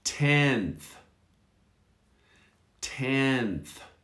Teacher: Again, the N almost disappears. 10th. So to make it easier, focus on the first and the TH.